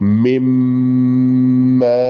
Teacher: പിന്നെ മിൻ കഴിഞ്ഞ് അവിടെ ഒരു മീ കഴിഞ്ഞിട്ടൊരു സാക്കിനായ നൂനുണ്ട്, മിൻ. ആ നൂനിനെ മീമിലേക്ക് പൂർണ്ണമായി ലയിപ്പിക്കുക, ഇദ്ഗാം ചെയ്യുക. മുന്നത്തും ഉണ്ടാവും കേട്ടോ, മുഴക്കം ഉണ്ടാവും മൂക്കിലൂടെയുള്ള.